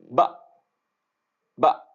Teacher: جب مخرج کے پاس وہ پہنچی ہے اس کے بعد آواز بند ہے، آواز کنٹینیو نہیں ہو رہی